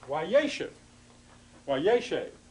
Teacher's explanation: What happens with this is when you add the wow, the pathak, the dagesh forte on the front to form the preterite or while consecutive imperfect form, the accent which was originally there, yeshev, now moves to the front.